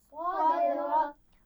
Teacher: सदरक दाल पर कलकला किया जाएगा, लेकिन उससे पहले साद की आवाज़ को मोटा अदा करना है, लेकिन दाल की आवाज़ मोटी नहीं होनी चाहिए